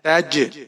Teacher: تا کے اوپر زبر ہے، آگے جیم ساکن ہے، تج، اور یہاں پر ہم قلقلہ کریں گے